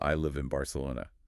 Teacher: Yes, so the phrase, I live in Barcelona, physically morphs into I live in Barcelona. Your mouth takes a shortcut. The N assimilates into the B.